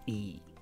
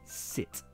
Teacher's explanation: just make sure you get the short vowel right. /ɪ/ not /i:/